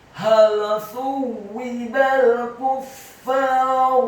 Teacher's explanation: Huruf fa-nya ditasydidkan, fathah 2 harokat karena setelahnya ada alif. Huruf ra-nya dibaca tafkhim tebal, dhammah 1 harokat.